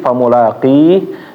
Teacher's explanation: Huruf ha mati famulaqi, sebelumnya adalah huruf ya, maka dibaca panjang. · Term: Mat arid lis sukun